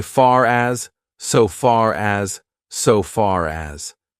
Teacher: we don't pronounce the r but actually we do if the next word starts with a vowel we pronounce it because we need to link those two words together and it's